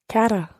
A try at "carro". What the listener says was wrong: Yeah, okay, but with a double R. Carra, carro.